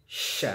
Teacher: Tidak boleh sya, tapi sya, senyumkan saja. Kemudian ada bunyi suara berhamburan ketika mengucapkan bunyi shin.